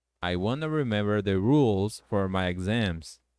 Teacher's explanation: se você quiser juntar want com to, fica I wanna remember the rules for my exams